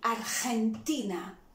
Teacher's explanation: remember the GE was very aspired